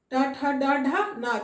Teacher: देखोगे जीभ उठ कर पीछे जाता है और तब छूता है तालु के पीछे वाले स्थान को। · यानी कि इसके ट वर्ग का जो उच्चारण करते हैं ट ठ ड ढ न, इसके उच्चारण में जीभ जो है वो उठकर पीछे मुड़कर, थोड़ा तालु से पीछे मुड़कर उस भाग को टच करता है, मूर्धा को, उस स्थान को बोलते हैं मूर्धा, है ना।